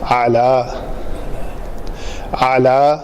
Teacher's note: عین کے لیے آپ کو وسط حلق سے عین ادا کرنی پڑے گی